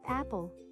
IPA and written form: ˈæp.əl (Apple)